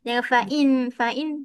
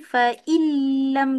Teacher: Kat sini tak ada gunnah, ada bila gunnah. Tanpa sebarang gunnah kat hidung.